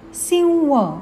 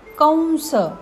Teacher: आणि अनुस्वारानंतर र श स हपैकी कोणतेही अक्षर आले असेल तर अनुस्वाराचा उच्चार अनुनासिक व असा होतो